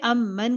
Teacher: اہدا امن، جب روکیں گے امن کر کے روکیں گے. میم پہ شد ہے تو 2 کاؤنٹس کریں گے